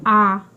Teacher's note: आ जब हम लोग बोल रहे हैं तो मुख पूरा खुल रहा है इसी को हम लोग विपृत स्वर कहते हैं जिसमें मुख पूरा खुला है और दूसरा जो है अर्ध विवृत स्वर दूसरा जो है अर्ध अर्ध विवृत सर अवसर इसमें जो है मुख आधा खुला होता है।